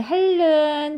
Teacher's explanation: 니은이 리을을 만나서 그 니은이 리을로 변하잖아요. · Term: 유음화